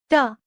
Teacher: In this varga, the tip of the tongue curls back to touch the hard palate just behind the alveolar ridge, forming retroflex sounds.